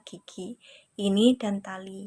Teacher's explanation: i kecil diterapkan ketika kita mengucap kata gigi ini dan tali yang memiliki suku kata terbuka